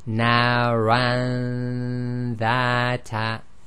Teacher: So again, you have to hold your nose and check if it's actually in the nasal passage itself. Now the dha here is a light letter, so the ghunna was light.